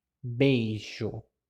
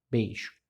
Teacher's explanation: A letra O aqui, ela vai ter a função de vogal. Já a letra I, por ser mais fraca, ela vai ter a função de semivogal.